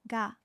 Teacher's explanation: the sound becomes voiced meaning the vocal cords vibrate when you say it